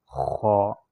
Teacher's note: خو گلے کے سب سے اوپر حلق سے ادا ہوتا ہے، اور یہ موٹا پڑا جاتا ہے.